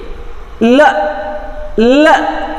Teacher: ಲ ಅಂತಂದಾಗ ಏರ್ ಈ ಸೈಡ್ಸಲ್ಲಿ ಹೋಗ್ತಕ್ಕಂಥದ್ದು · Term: ಲ್ಯಾಟ್ರಲ್